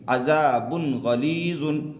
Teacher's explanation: तनवीन की आवाज़ को जाहिर करके बग़ैर गुन्ना के जल्द पढ़ेंगे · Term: इजहार